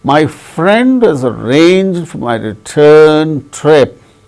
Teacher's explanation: out of ten syllables in this sentence only four receive accent between the first two accented syllables that means friend arranged between